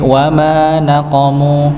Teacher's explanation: wama mimnya dibaca 2 harakat dikarenakan ada huruf mad, ya, huruf panjang alif di situ bertemu sebelumnya dengan fathah, maka pasangannya dibaca 2 harakat. · ma-nya dibaca 2 harakat, mimnya pada kata naqamu maka juga dibaca 2 harakat